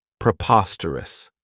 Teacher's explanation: This adjective has four syllables, and the stress is on that second syllable, preposterous. Remember that OS has that schwa, that sound.